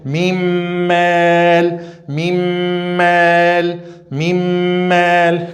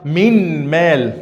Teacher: Não vai falar minm mel não. A letra nun não vai pronunciar mais porque a gente vai fazer fusão entre a letra nun e a letra min. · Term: Fusão com nasalização